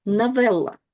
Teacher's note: unstressed O is read as A